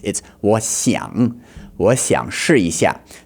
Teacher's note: But his 想, which means to want, this word begins with an X in pinyin, okay? And the X sound in Chinese is kind of halfway between a sh and a s. Okay, it's like sh, if you can hear the difference there.